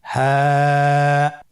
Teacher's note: হা হরফটি উচ্চারণ ক্ষেত্রে অবশ্যই বারিক হবে এবং 1 আলিফ টেনে পড়তে হবে।